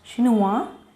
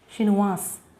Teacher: Here in masculine form S is not pronounced. In feminine form S is pronounced.